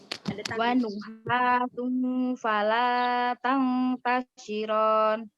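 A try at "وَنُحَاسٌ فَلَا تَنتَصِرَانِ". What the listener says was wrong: Masya Allah, bagus.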